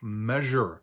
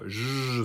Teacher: an S may also represent a sound that's actually a voiced SH sound, as in the word measure.